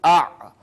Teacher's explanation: سانس ٹھہر گئی وہیں پہ، جاری نہیں رہی سانس، اور آواز جو ہے تھوڑا بلند رہتی ہے ان حروف کی ادائیگی میں۔ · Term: حروف مجہورہ